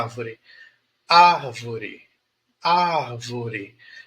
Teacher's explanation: então eu começo alto e vou descendo